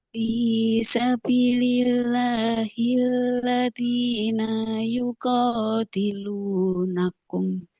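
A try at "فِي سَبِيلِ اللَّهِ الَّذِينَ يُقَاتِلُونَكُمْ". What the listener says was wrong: Nah, di sini nunnya nggak boleh panjang. Yuqatilunakum karena fathah nggak ada alifnya. Fi sabilillahil ladzina yuqatilunakum. Nah, yuqatilunakum jangan nakum.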